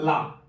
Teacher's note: वायु जो है जिह्वा के पार्श्व से यानी कि बगल से निकलती है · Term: पार्श्विक